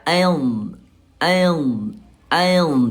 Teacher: Ayah Bunda keluarnya dari sisi lidah. Ah ayah bunda yang kanan boleh.